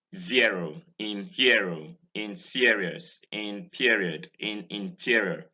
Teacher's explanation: a closed front centering diphthong